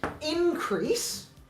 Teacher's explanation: Is moving the primary stress forward to the first syllable. When you turn it from a noun, when you turn it from a verb to a noun. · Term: phonemic stress